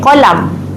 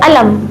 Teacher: Huruf qaf memang tukar jadi hamzah. Semua huruf qaf.